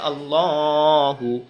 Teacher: এটাকে ল পড়তে হয়, শুধু ল, আকার ছাড়া, তখন এটা মোটা হয়ে যায়